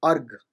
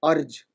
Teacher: So again, sort of ga becoming ja, it is again like the ease of articulation, it's called palatalization